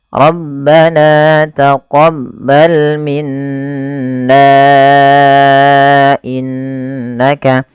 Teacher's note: Apabila ada huruf nun berharakat tasydid, maka dibaca dengan bacaan gunnah. Cara membacanya menahan suara bunyi n-nya.